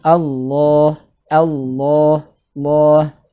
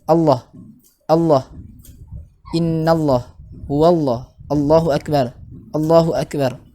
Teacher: minimal ketika kita membaca lafaz Allah itu minimal dipanjangkan 2 harokat itu ya